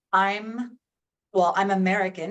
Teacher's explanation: It sounds almost like the M is moved over or that it's blended into one word.